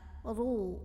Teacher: dibunyikan dengan tebal dengan mengangkat pangkal lidah kita. Ru, bunyinya lebih mengisi rongga mulut kita. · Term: tafkhim